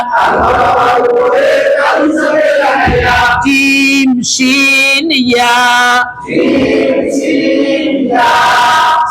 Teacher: ছয় নাম্বার মাখরাজ জিহ্বার মধ্যখান তার বরাবর উপরের তালুর সঙ্গে লাগাইয়া জিম শিন ইয়া।